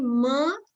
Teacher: When I say m, the mouth is closed, the air stream gets blocked, and the air is released from the nose.